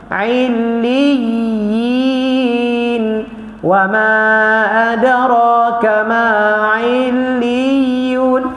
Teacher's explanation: Huruf ya bukan huruf syiddah huruf rakhawah. Dia kena bergerak walaupun ada sabdu lam tawasut dia bergerak juga.